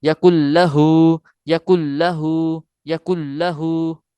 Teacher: کاف کو ڈائریکٹ لام کے ساتھ ملا رہے ہیں، نون ساکن کو ہم درمیان سے ختم کر رہے ہیں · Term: لام مشدد